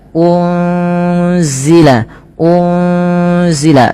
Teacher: Pada lafal unzila ini ada nun sukun bertemu dengan huruf zai. Apabila ada nun sukun bertemu dengan huruf zai ini, cara membacanya adalah nunnya disamarkan kepada huruf zai ya. Unzila, unzila sembari ditahan dengan dua harakat bunyinya. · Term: ikhfa hakiki